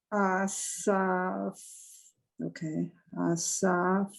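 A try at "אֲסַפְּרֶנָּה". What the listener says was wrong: That's a pay. are asa, and then that's a pay, so it has a P sound.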